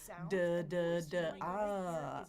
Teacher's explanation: if I make a D sound like dog, D, I'm voicing that as I let the air out, right? So that would be the difference.